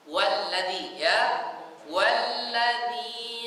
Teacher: Kalau dia di awal alladzi, tapi kalau ada huruf sebelumnya, jadi seolah-olah alif di situ tidak kebaca.